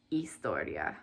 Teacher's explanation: So that H is just silent. You just start with the E sound. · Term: silent H